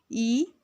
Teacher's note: ई में कोई भी वृत्त नहीं बनता है, तो ई अवृतमुखी स्वर है।